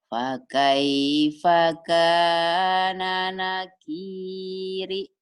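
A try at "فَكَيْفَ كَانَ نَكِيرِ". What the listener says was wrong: Fakaifa kana nakiri. Ibu udah bagus, cuman spinnya agak cepetan. Fakaifa kana nakiri.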